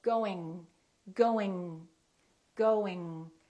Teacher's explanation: tongue doing your tongue is touching in the back good however the G is not releasing very much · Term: ng sound